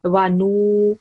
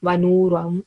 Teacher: very long nu sound, wanu ram, up to 2 seconds